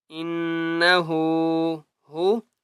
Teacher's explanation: اوپر تشدید ہے، غنہ کریں گے، انہ، ہا الٹا پیش ہو، ہا کے اوپر الٹا پیش ہے اس لیے ایک الف کی مقدار کھینچ کر پڑھیں گے